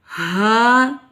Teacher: حلق کے آخری حصے سے ادا ہوگا، یہ مد اصلی ہے.